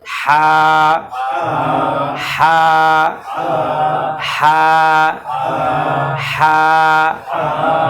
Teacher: ওযে বলেন হলকের মাঝখান থেকে এইটা হল হলকের মাঝখান থেকে তারানে আমরা একেবারে ভিতর থেকে দম বের করেও বলবো না আবার স্বাভাবিকও বলবো না মাঝামাঝি